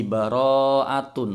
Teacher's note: Ro di sini bacaan mad wajib muttasil, panjangnya 5 harokat. Mad tabi'i ketemu hamzah dalam satu kalimat atau satu kata.